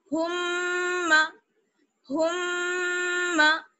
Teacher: کیونکہ جب آپ میم اور نون پر تشدید آ جاتی ہے تب وہاں پر غنہ ہوتا ہے, ناک میں آواز لے کر جائیں گے, ایک الف کے برابر ٹھہریں گے